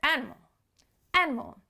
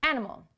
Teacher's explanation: There's 3 syllables there, animal, but you really only hear the first 1 or 2